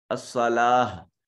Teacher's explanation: صاد کو مفخم ادا کریں گے، لام کے اوپر الف المدیہ صغیرہ ہے، ایک الف کے برابر اس کو لمبا کریں گے۔